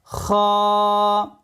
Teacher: কণ্ঠনালীর শেষ ভাগ হইতে খ উচ্চারিত হবে